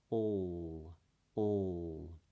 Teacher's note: the sound feels like it's gathering in the back of the mouth or the back of the throat. It's more guttural. It doesn't feel like it's traveling out quite as easily. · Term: dark L